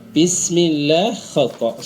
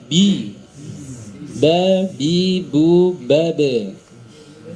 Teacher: menjadi P bismillah harusnya Bi ya seperti itu ya baik ini makhrajnya persentuhan antara dua bibir namun sedikit ada tekanan jika tidak menekan dikhawatirkan dia tertukar menjadi huruf P Nah itu ya huruf ba ketika diucapkan tidak boleh mengalir nafas